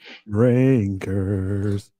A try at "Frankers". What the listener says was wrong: I didn't hear an F there.